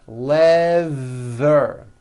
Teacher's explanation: Stick out your tongue and make a strong vibration.